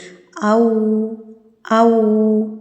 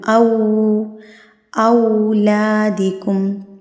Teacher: لین کو آپ نے بالکل بھی لمبا نہیں کرنا ہوتا لیکن اپنے ہونٹوں کو آپ نے بالکل گول کر لینا ہے. اتنا گول کر لینا ہے کہ آپ پینسل کا سکہ تو گزر سکے لیکن اس میں سے پوری پینسل نہ گزر سکے. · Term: واو لین